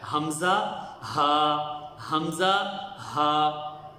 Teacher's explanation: گلے کے اس حصے سے یہ ادا ہوتا ہے جو سینے کی طرف ہے۔ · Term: اقصی حلق